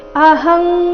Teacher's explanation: ಅನುಸ್ವಾರದ ಉಚ್ಚಾರಣೆ ಕ ವರ್ಗದ ಅನುನಾಸಿಕದ ರೀತಿ